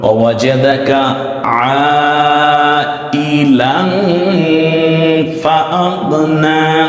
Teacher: তানবিনের নটাকে আমরা অনিশ্বারের মতো করে চন্দ্রবিন্দু দিয়ে পড়ি